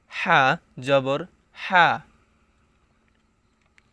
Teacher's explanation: জিম জবর যা, শক্ত করে পড়তে হবে জিম জবর যা। হা জবর হা, হাকে গলার ভিতরে নিয়ে পড়তে হবে, গলার মধ্যখান হইতে উচ্চারণ হবে